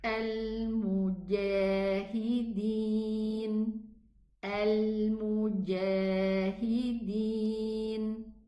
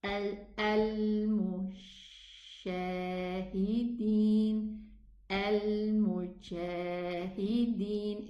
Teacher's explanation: Instead of pronouncing it ja, we pronounce it sha. This means that I haven't closed the makhraj properly before I pronounce the jim fatha.